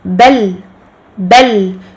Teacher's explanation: Je donne au lam soukoun son temps de al-bayniya, donc le temps intermédiaire qui se situe entre le blocage du son et l'écoulement total du son.